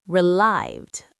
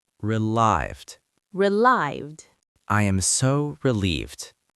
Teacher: It's not relieved, but relived. The stress is on the second syllable.